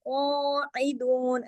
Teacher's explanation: قاف موٹا اور ایک الف کے برابر کھینچے گا بھی · دو جو ہے وہ 2 حرکات کھینچے گا واو مدہ کی وجہ سے